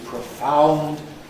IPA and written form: prəˈfaʊnd (profound)